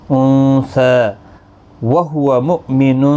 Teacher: حمزہ ساکن کو جھٹکے کے ساتھ پڑھنا ہے